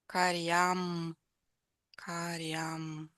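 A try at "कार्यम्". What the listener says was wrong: Where's the long A? Where? First syllable, yes. So say it with a really long A only in the first syllable.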